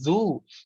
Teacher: زبان کی نوک تھوڑی سی باہر آتی ہے، اوپر کے دو دانت آ کے زبان سے ٹکراتے ہیں